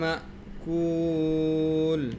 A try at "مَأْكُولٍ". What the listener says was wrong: না না টান হবে না মাকুল দেখো ওখানে হামজা সাকিন দেওয়া হুম তো এখানে কোনো ইদগাম নাই কোনো কিছু নেই